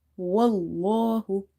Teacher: you have to say this lam in the word Allah heavy if you see there is a fatha before it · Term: lam heavy